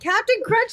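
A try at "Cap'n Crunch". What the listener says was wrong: It's not Captain, it's Cap'n. Cap'n.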